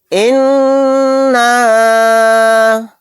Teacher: نون کے اوپر تشدید ہے، یہاں پر غنہ کر کے پڑھیں گے۔